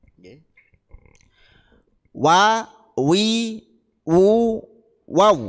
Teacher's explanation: kedua bibir atas dan bawah menjadi makhrajnya huruf wau